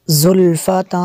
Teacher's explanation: زا کو سخت پڑھنا ہے، آگے تنوین کے بعد سین ہے، حروف اخفاء میں سے ہے